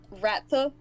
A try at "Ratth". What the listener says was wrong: There's no A at the end.